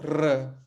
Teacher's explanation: this is the one retroflex sound that Portuguese has